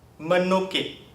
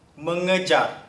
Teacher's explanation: the p t s k will merge with the nasal into m, n, ny, and ng respectively